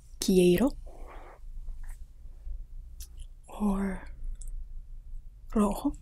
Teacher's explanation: R is pronounced a little bit differently than English. It has more of a trill to it. So you can think about saying the word butter in English, and the way that you trill your tongue in the back is much like the R that you would use in Espanol.